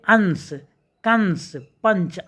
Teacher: नाक से अधिक सांस निकलते है और मुख से कम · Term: अनुस्वार